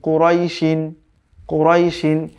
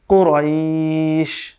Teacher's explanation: যদি আপনি এখানে ওয়াকফ করেন তখন এটা লিন হবে এবং সেটা এক আলিফ দীর্ঘ করে পড়তে হবে।